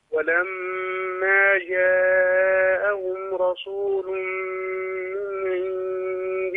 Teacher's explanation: ميم عليها شده غن على طول